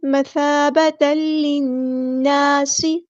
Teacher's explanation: تا کے اوپر تنوین کو ہم نے لام کے ساتھ مکس اپ کر دینا ہے، ادغام ہو رہا ہے یہاں پہ ، ادغام بلا غنہ یعنی ادغام کامل، مثابتا للناس، نون پہ · نون پہ غنہ زمانی ہو رہا ہے، ایک الف کے برابر رکیں گے